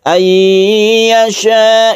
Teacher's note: Ayyasha kita dengungkan, kalau nun bertemu dengan ya disebut dengan idgham bi gunnah.